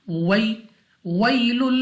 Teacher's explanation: वै quickly without stretching, बगैर खींचे बगैर झटका दिए मारूफ पढ़ेंगे